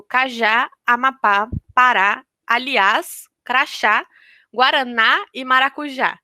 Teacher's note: essas palavras elas são todas oxítonas, porque a última sílaba é a sílaba tônica